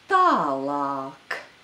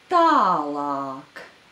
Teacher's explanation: There are 2 long vowels a in this word.